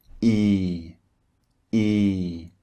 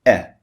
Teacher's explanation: the first one is long and the second one is short